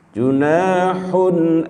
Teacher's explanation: hun ya, dhammatain bertemu hamzah, dibaca jelas, jangan didengungkan. Junahun langsung, jangan junahun masih ada dengungnya itu.